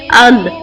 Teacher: لام، نون اور را حروف طرفیہ کہلاتے ہیں۔ جب زبان کا سامنے والا کنارہ اوپر کے دانتوں کی جڑ والے تالو سے لگتا ہے تو یہ حروف ادا ہوتے ہیں